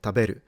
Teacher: the nakadaka pattern, so low, high, low, where there is a drop somewhere